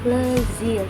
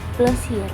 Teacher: Kemudian yang kedua ada plezir menjadi plesir, yang artinya tamasya. Terjadi perubahan pada suku kata akhir, yaitu zir menjadi sir.